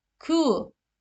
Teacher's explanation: ü ile u sesi arası dudaklar fazla büzülmeden okunur Kuğu tu nu nu du du bakın kalın seslidir direk o